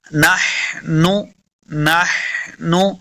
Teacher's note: नहनु नून ज़बर नह हा को लफ्ज़ के साथ पढ़ना है। हा का मखरज हलक के दरमियान वाले हिस्से से